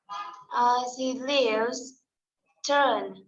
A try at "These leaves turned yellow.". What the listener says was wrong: D sound. Turned. These leaves turned yellow.